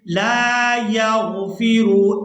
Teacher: इन्नल्लाह ला यग़फ़िरु, ला यग़फ़िरु, यहाँ लाम को अलिफ मद्दा की वजह से खींच कर अदा करेंगे